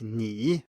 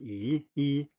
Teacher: it's just a little bit further forward and higher up than the normal i in english